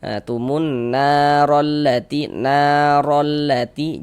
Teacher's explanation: harakat fathah atau tanda baca fathah ada alif sebelumnya ada harakat fathah maka huruf yang memiliki harakat fathah dibaca panjang seperti itu. Sehingganya na dibaca panjang. Nah, mad thobi'i panjang dua harakat. Dua harakat saja panjangnya.